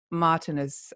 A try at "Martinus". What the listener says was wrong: Well, actually, in Danish, we say Martinus. We stress the I.